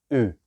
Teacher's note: la U gráfica se pronuncia U. Veis que se cierran más los labios.